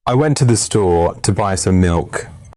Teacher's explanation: The stressed words are went, store, buy, milk. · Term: rhythm and stress